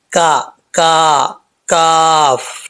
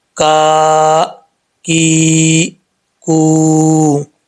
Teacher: اس کاف کا مخرج ہے زبان کی جڑ اوپر والے تالو کے سخت حصے سے لگے تو کاف پڑھا جاتا ہے